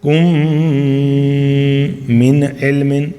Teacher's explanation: یہاں پہ اظہار ہے، نون ساکن کے بعد کیا آ گیا؟ عین، تو یہ حروف حلقی میں سے ہے تو اس لیے ہم اظہار کے ساتھ پڑھتے ہیں